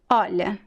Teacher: Olha. The rest of the word is very weak. Olha. Just the O is very strong.